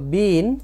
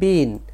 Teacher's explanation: ই এটি দীর্ঘস্বর আর আই হচ্ছে হ্রাস অর্থাৎ অল্প স্বর